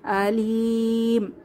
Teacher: তিন আলিফ টেনে ওয়াকফ করতে হবে,